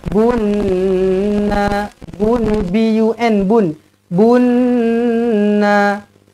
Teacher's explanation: alif lam syamsiah dekat huruf nun ni terus didengungkan dua harakat